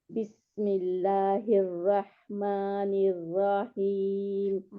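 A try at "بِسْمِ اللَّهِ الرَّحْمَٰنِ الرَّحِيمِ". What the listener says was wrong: निर्रहीम, रा को खींचना नहीं है।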